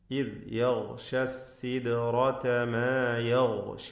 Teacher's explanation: ശബ്ദം ചലിപ്പിച്ച് സുക്കൂനിനെ ഹറക്കത്ത് പോലെ ഉച്ചരിക്കരുത്. ഇദ് യഗ്ഷ സിദ്റത എന്നതിലെ ദാലിൻ്റെ സുക്കൂൻ ഖൽഖല നൽകി ശബ്ദം ചലിപ്പിച്ച് വ്യക്തമാക്കണം